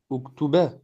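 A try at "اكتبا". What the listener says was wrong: Uktuba. Ah non, il y a un med. Uktuba, ça.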